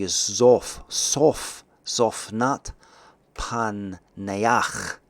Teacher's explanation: So there's a guttural chet at the end of this word.